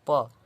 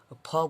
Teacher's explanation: यदि आप ओठ को नहीं चटाइएगा ना तो प से लेकर जो म तक होता है वो आप नहीं बोल पाएंगे। जैसे प, तो प बोलिएगा तो उसमें भी ओठ सट रहा है, फ बोलिए उसमें भी ओठ सट रहा है, म बोलिए उसमें भी ओठ सट रहा है। यदि आपका ओठ नहीं सटेगा तो आप प वर्ग का उच्चारण ही नहीं कर सकते बिना ओठ सटाए।